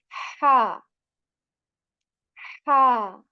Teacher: we push the tongue a bit backwards